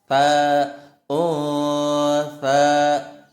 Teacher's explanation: Kalian bilang sa tapi lidah ditempel di gigi seri atas.